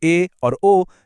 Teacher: जब हम संवृत स्वर बोलते हैं जैसे इ और उ तो दरवाजा मतलब हमारा मुंह लगभग बंद रहता है। फिर आते हैं अर्ध संवृत जैसे ए और ओ जिनके लिए दरवाजा थोड़ा सा और खुलता है।